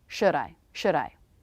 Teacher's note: I make a really quick flap of the tongue for the D.